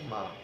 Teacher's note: যখন আমরা যেমন মা শব্দটা বলি, মা এক অক্ষর, তাহলে কিন্তু এটার উচ্চারণটা একটু দীর্ঘ হবে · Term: দীর্ঘ উচ্চারণ